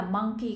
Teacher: monkey các bạn nhấn stress on the first syllable